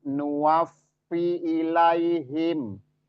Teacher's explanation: hati-hati di fa ada tasdid, itu ditekan dulu, disangkutin dulu